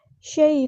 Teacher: مدلین ہو رہی ہے، نرمی سے موڑیں گے